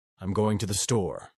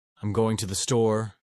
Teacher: Californians often raise their tone at the end of sentences, making everything sound like a question. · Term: uptalk